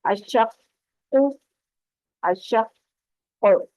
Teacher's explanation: الشق الشق حروف قلقلہ ہے قاف، اور اب یہاں پر کاف پہ وقف کرتے ہوئے آپ نے دیکھنا ہے کہ آپ کا قاف پر بھی ہونا چاہیے اور اس پر قلقلہ یعنی پلٹ کر آواز بھی آنی چاہیے اور اس کی تشدید بھی اچھے سے ادا ہونی چاہیے